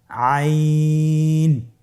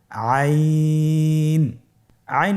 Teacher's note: হরফটি কন্ঠনালীর মধ্যখান থেকে উচ্চারিত হয়